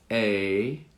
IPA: ei